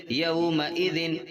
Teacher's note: اب اس میں ایک چیز کا دھیان رکھنا ہے، پڑھتے وقت 2 زبر کی تنوین، 2 زیر کی تنوین اور 2 پیش کی تنوین یا نون ساکن کے بعد میں ان 6 حرفوں میں سے کوئی حرف آئے گا تو ان کو بغیر غنہ کے ظاہر کر کے پڑھنا ہے، یعنی ناک میں آواز بالکل نہیں جائے گی